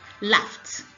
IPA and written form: lɑːft (Laughed)